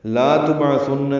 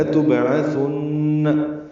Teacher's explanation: یہ دونوں لام جلدی پڑھنے ہیں، اسی لام کو لمبا نہیں کرنا. لا تبعثن نہیں پڑھنا، لتبعثن.